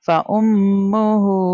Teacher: میم کے اوپر تشدید سائن ہے اس لیے ہم غنہ کر کے پڑھیں گے